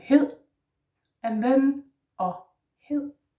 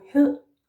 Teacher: the soft D in Danish is with the tongue down in your mouth, like that, in profile, like that. It sort of touches just the top of your lower teeth, just slightly and very lightly. Yeah, no need to force.